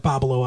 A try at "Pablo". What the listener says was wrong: you're adding an extra syllable it's bubble it's pablo pablo two syllables